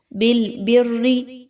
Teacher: أَتَأْمُرُونَ النَّاسَ، next بِالْبِرِّ، اس میں دیکھیں تو با کو را کے ساتھ ملانا ہے، را مشدد ہے لیکن را کے نیچے زیر ہے اس لیے آپ اس را کو باریک پڑھیں گے